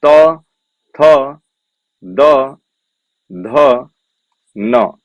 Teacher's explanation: त वर्ग के सभी वर्ण आपके दंती होते हैं